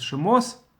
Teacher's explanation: Tav without Dagesh, without the dot in the middle, is pronounced by Ashkenazim as S sound. But most Sephardim do not distinguish it from Tav without Dagesh, with Dagesh.